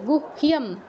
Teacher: গুহ্যম, হয়ের সাথে ইও যোগ হয়েছে, ইও আমাদের 5 অনুনাসিক্য বর্ণের মধ্যে নেই, তো আমরা আগে ইও উচ্চারণ করব না, আগে হ উচ্চারণ করব, তারপর ইও উচ্চারণ করব